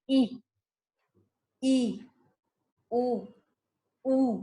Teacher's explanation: संवृत स्वर यानी कि हमारा मुख जो है स्वर का उच्चारण करते समय या तो बंद हो जाता है या बंद होने की स्थिति में होता है। जैसे कि ई, उ, ऊ, तो ये जो है उसमें उच्चारण करते समय हमें प्रयत्न करना पड़ता है।